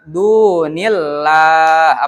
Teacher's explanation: Du dibaca panjang berarti dihukumi dengan tajwid mad thobi'i. Ya, karena ada huruf yang berharakat domah setelahnya ada wau ma ti atau wau sukun.